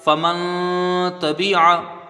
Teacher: نون ساکن کے بعد حروف اخفا کا تا ہے تو یہاں نون کی آواز کو ناک میں چھپا کر غنہ کر کے پڑھا جائے گا